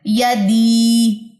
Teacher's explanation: جزم جب ہم پیچھے سے سپورٹ لیں گے, اگر پیچھے زیر ہوئی تو وہاں پہ یا مدہ کا قاعدہ بن جائے گا. تو یا مدہ کا مطلب آپ نے اس کو 2 سیکنڈ یا 1 الف کے برابر جو ہے وہ لمبا کرنا ہے